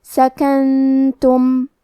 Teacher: اخفاء کا معنی ہے چھپا دینا، تو ہم نون ساکن کو چھپاتے ہوئے اور غنہ کے ساتھ یہ حکم کو ادا کریں گے